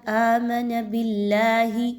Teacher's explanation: آگے دیکھیے تو حرف جلالہ اللہ سے پہلے والے حرف کے نیچے، با کے نیچے زیر ہے، اس وجہ سے اللہ کے حرف کو باریک پڑھا جائے گا